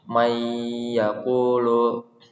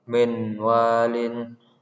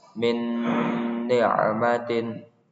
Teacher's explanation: Bacaan langsung masuk ke huruf berikutnya sambil berdengung.